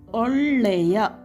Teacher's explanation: I am stressing the word le because le has ಳ ಒತ್ತಕ್ಷರ